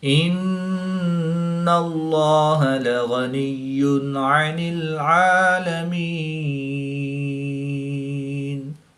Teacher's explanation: نون مشدد میں ہمیشہ غنہ ہوتا ہے، تو یہاں پر غنہ آنی کر کے پڑھیں گے